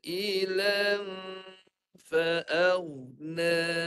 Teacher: La satu harakat dulu. La, lepas la baru dah dengung.